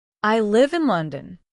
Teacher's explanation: The pitch naturally falls at the end on the word London. That's what makes it sound complete. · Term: inonation